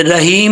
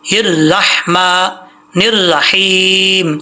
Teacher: हिर रहमा निर्रहीम, लास्ट पे दोनों हा बारीक हैं, ये दोनों हा बारीक पढ़ने हैं, मोटे नहीं पढ़े, रहीम नहीं पढ़ना, ये बहुत बड़ी मिस्टेक है, ये अक्सर लोगों में पाई जाती है।